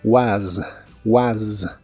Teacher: la pronunciación de la palabra was termina con un sonido como de S vibrante. Es el sonido que comúnmente se usa para la Z en inglés, aunque varias palabras con S también la usan.